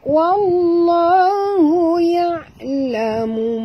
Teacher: lam di tengah-tengah, lam pada lafaz jalalah dibaca tebal · alif lam syamsiah, masukkan bunyi waw terus ke dalam lam. Di atas lam ada tasdid, maka kita kena baca njut.